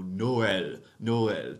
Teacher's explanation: used to indicate that there are two separate vowels going on don't cram them together and do one thing instead give me two separate vowel sounds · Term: le tréma